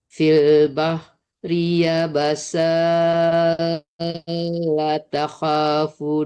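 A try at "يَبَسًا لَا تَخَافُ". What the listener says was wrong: Tiba ya basalla langsung jangan dipanjangkan sa-nya ya, Dok. Oh, nggak boleh soalnya kan di depannya ditasdidkan ya.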